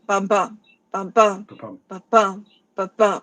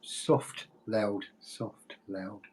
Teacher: the first syllable is unstressed and the second syllable is stressed